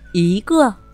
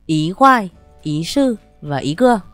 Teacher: Còn ở trong câu, chữ Y khi âm theo sau là thanh 4 thì ta đọc thành thanh 2, đọc là Ý. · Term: biến điệu chữ Y